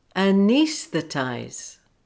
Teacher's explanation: the stress on E, but it has secondary stress on ties